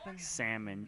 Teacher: Oh, I don't pronounce the L in salmon.